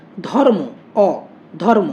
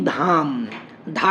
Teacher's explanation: অটা হচ্ছে হ্রস্বস্বর, আটা হচ্ছে দীর্ঘস্বর। ধর্ম, অ, ধর্ম উচ্চারণটা দেখো, অটা কম সময় লাগছে, কিন্তু যখন আমরা বলছি ধাম, ধাটা তখন অনেক বেশি সময় ধরে উচ্চারণ করতে হচ্ছে